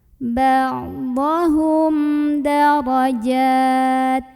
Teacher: Ada hukum idhar syafawi karena ada mim sukun yang ketemu sama huruf dal. Maka cara membaca mim sukunnya ini adalah dibaca dengan jelas, bunyi am dan tidak perlu ditahan.